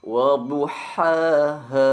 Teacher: dipanjangkan 2 harokat atau 1 alif pada huruf H karena merupakan mad asli